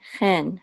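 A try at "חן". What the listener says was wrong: Chen. Yeah, just it's better to make it like an H than a Chaf. H is actually closer to Het than Chaf.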